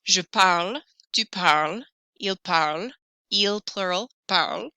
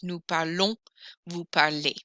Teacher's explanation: je, tu, il, and il plural, these endings are silent. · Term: la butte